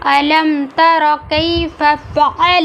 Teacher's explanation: عین کو حلق کے درمیانی حصے سے ادا کیا گیا۔